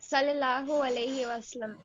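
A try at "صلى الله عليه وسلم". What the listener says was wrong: Good. Next.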